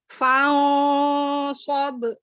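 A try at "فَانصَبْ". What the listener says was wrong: Tebalkan gunanya. Fa'sob. Kurang tebal nih, barusan kurang tebal. Bunyi gunanya.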